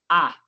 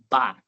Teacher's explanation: Para mim dizer Ba, o som parou nos meus 2 lábios, o de cima e o de baixo. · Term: oclusão